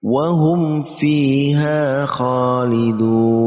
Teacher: Di situ ada dal yang berharakat dhammah lalu diikuti dengan wawu sukun, maka dibaca panjang 2 harakat harusnya. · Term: mad arid li sukun